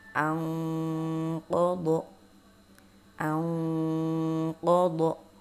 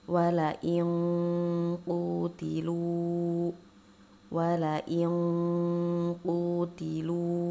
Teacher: Selanjutnya yaitu ketika nun sukun atau tanwin bertemu dengan huruf qaf. Nah, ini termasuk ke dalam ikhfa ba'ad. Jadi bunyinya lebih ang.